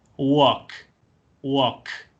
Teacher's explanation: si ustedes se ponen la mano en la garganta, van a ver que al hacer K, no vibran las cuerdas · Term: voiceless consonants